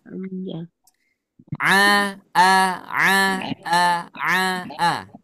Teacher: huruf Ain makhrajnya di mana bagian tengah tenggorokan